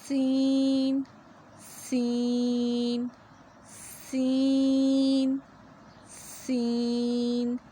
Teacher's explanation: سین کی ادائیگی میں بھی سیٹی کی آواز ہونی لازمی ہے، سین بھی باریک ہوتا ہے۔